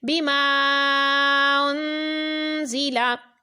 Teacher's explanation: الف مدہ کے بعد حمزہ دوسرے کلمے میں ہے تو مد منفصل ہے، اس کو کھینچ کر پڑھا۔ انزلا میں نون ساکن کے بعد زا ہے تو اخفاء کا قاعدہ ہے، یہاں پر غنہ کریں گے